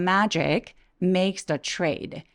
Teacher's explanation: believing in the Magic makes the trade 하면서 문장 끝날 때는 trade 하면서 목소리 뚝 떨어지면서 끝난 느낌을 내주세요